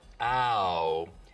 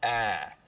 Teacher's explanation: the smoothing is when you take a diphthong like ow and smooth it out so it's just one sound